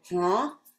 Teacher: that H is nasalized